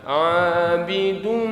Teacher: Tapi dengung. Abidum, ada di hidung suaranya. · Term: dengung gunnah